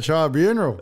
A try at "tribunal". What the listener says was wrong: Tribunal. No, there's no R. There's only one R. Tribunal.